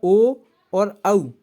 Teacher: ऐसे वर्ण जो कंठ और ओष्ठ की सहायता से बोले जाते हैं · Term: कंठोष्ठ वर्ण